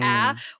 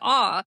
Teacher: It's right in between the two vowels. The foreign A that gets borrowed into English, you have to make a choice. You either push it forward to a or you push it back to ah · You either push it forward to ah or you push it back to aw